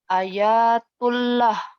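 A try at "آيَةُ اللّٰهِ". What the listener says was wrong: A-nya panjang ya. A itu 2 rokat. Ayatullah.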